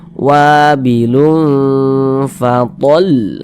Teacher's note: karena ini ikhfa hakiki, maka kita bacanya itu dibaca samar, kemudian didengungkan. Bunyi tanwin ini kita baca samar, kita baca wabilun.